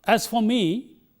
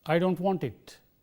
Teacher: the phrase will get a rising tone and the main Clause will get a falling tone